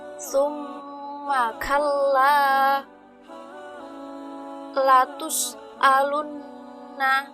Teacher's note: Cara mengucapkan gunnah asliyah yaitu dibaca dengung dari pangkal hidung dan menahan suara nun atau mim sampai dua ketukan